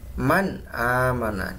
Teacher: nun sukunnya terbaca dengan jelas ya di tenggorokan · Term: izhar halqi